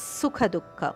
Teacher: ಎರಡು ಖ ಮಹಾಪ್ರಾಣ, ಸುಖ ದುಃಖ